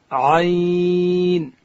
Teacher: عین ادا کیږي د ستوني په مابینځ کښې